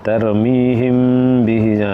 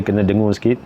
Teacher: Kalau huruf ba muncul selepas huruf mim, dia akan pronounce slight nasal sound in the nose. Dia punya dengung dekat hidung.